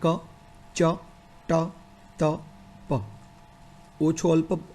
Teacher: અઘોષ અલ્પ પ્રાણ એટલે ક છે તો એમાં કોઈ પડઘો પણ નથી અને ઓછા પ્રાણ સાથે, પ્રાણવાયુ સાથે એનું ઉચ્ચારણ થઈ શકે.